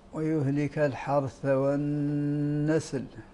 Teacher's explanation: النون المشدده فيها الغنه بقدر حركتين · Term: الغنة